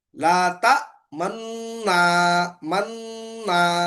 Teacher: پیش کا اشارہ کر رہے ہیں مگر پیش ادا نہیں کر رہے ہیں، सिर्फ पेश का इशारा कर रहे हैं, जम्मा का इशारा कर रहे हैं, होठों को गुंचा की तरह बनाकर क्या कर रहे हैं, ला ता मन ना, इस तरह इसको अदा कर रहे हैं। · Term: اشمام